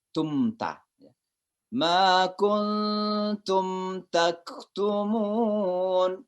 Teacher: mim mati ketemu dengan ta. Itu namanya izhar syafawi. Jadi jelas di bibir suara mimnya.